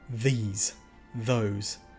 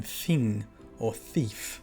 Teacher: Now the DH is the voiced TH sound in these or those. So the tongue kind of goes to the back of the teeth, and it's the these, those, not the harder sound in thing or thief. For that sound you actually get the tongue further beyond the teeth to make the th.